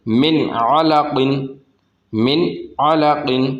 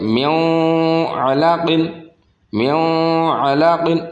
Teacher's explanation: اسی طرح سے یہاں پر نون ساکن ہے اور نون ساکن کے بعد عین آ گیا تو عین بھی حروف حلقیہ میں سے ہے، یہاں پر اظہار ہوگا، یعنی کہ یہاں پر اکفا نہیں کریں گے